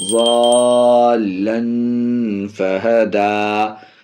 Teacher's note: تنوین کے بعد حرف اخفا، اس لیے یہاں پہ اخفا ناک میں آواز جائے گی، ضَالًّا فَهَدَى، یہاں پہ آیت ہے، اور یہ دال اپنی جگہ پر بھی باقی رہے، کیونکہ یہ کھڑا زبر ہے، کھڑا زبر بلاول ہے الف مدہ کی۔